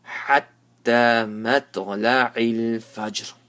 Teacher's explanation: So after the small qalqala of jim, give a little bit of ra.